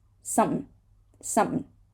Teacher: So the NG becomes an N, right?